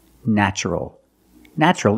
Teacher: the first syllable is pronounced with a short a like black cat